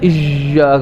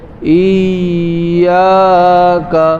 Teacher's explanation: یا نرم حرف ہے رخوت, ٹھیک ہے نرم حرف ہے, تو اس میں آواز جاری رہے گی